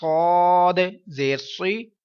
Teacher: قوف الف زبر قو، لام زبر لا، قولا، کچھ اس طرح سے ہم اس کو پڑھیں گے۔ آگے دیکھیں صاد حروف مستعلیہ ہے، ساتھ میں حروف صفیریہ ہے، پور آواز میں پڑھا جائے گا، ساتھ میں سیٹی کی آواز آئے گی